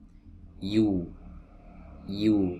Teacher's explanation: bertumbuhnya ada di wasatul lisan, ada di tengah lidah bertemu dengan langit-langit di atasnya